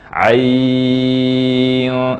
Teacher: Ain kita panjangkan dengan panjang 6 harokat. Ain. Lalu hunnah ikhfa.